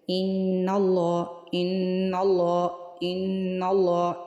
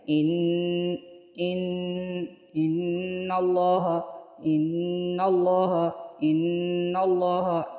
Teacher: یعنی نون پہ ہم جب رکے ہیں، نون کو 1 الف کے مقدار کے برابر ہم نے کھینچا ہے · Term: غنہ